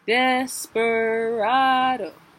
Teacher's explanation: Accented, unaccented, accented, unaccented